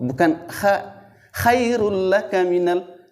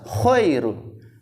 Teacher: Nah, itu jadi dari sisi sifat hurufnya dia adalah isti'la, diangkat pangkal lidah sehingga dia itu suaranya yang keluar itu tebal